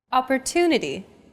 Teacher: the stress syllable to in Opportunity is deemed more important so it's pronounced longer than all other syllables